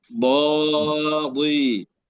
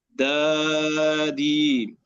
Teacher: الخطأ أن نقرأ الضاد بالدال